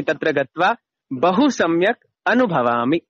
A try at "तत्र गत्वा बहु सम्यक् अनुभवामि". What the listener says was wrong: Correct.